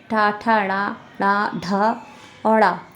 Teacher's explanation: मूर्ध से बोले जाने वाले पांच वर्ण आते हैं। इन्हें मूर्धन्य वर्ण कहते हैं।